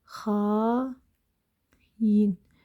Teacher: Və bu saitlər işləndiyi zaman, sözün tərkibində işləndiyi zaman mütləq şəkildə, deməli bu iki saitin ortasına y samiti, y bitişdirici samiti əlavə olunur